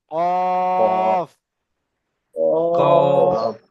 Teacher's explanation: জিভের গোড়াটি উপরের তালুতে লাগান